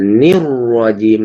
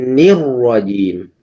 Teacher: ninya tetap dibaca tipis, roknya yang dibaca tebal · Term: tafkhim